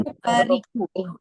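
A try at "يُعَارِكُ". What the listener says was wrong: Yu'ariku. Jangan disimpan itu ainnya. Ariku.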